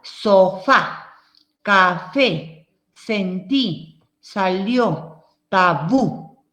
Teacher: Ahí está en la última sílaba la acentuación.